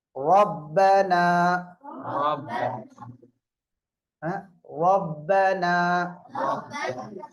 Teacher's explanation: முதல் வரிசையும் இரண்டாவது வரிசையும் இதில் வரக்கூடிய ரா தப்ஹீமாக வாசிக்க வேண்டும்